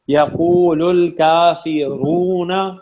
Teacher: را موٹا پڑھیں گے, اس پہ پیش ہے.